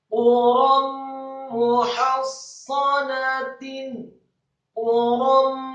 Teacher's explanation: Quram muhassanatin, quram, kata quram, qafnya dibaca tafkhim tebal marfu' atau dhammah 1 harokat, kemudian ra-nya dibaca tafkhim tebal dengan harokat fathah tanwin